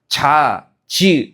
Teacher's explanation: 혀끝이 아니라 혓바닥 가운데가 단단한 입천장 쪽에 붙었다가 떨어지면서 소리가 나거든요. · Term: 파찰음